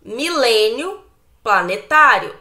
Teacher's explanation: nós temos a penúltima sílaba mais forte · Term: paroxítona